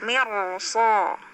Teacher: Tapi kalau mirso atau mirsu itu dibaca tebal ro-nya.